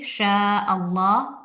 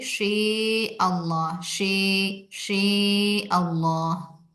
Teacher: सिर्फ शीन में इमाला करेंगे, शे अल्लाह। बाकी सारे हरूफ वैसे ही पढ़ेंगे